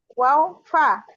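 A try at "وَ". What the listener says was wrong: হ্যাঁ ওয়াও না, কিন্তু এটা ওয়া বলবেন। ওয়াও এর উপরে যদি জবর দেন তাহলে উচ্চারণ কি হয়? ওয়া। কি হয়? ওয়া, ওয়া, রাইট, ওয়া। তাহলে মা বা ওয়া ফা ঠোঁট থেকে বের হয়, বলেন।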